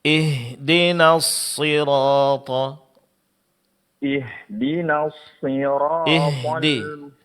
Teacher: tasydid pada huruf shad jelaskan dan ditebalkan huruf shadnya dan sifat sopir itu dijelaskan.